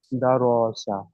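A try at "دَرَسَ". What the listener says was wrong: র টান হবে না, দা র সা।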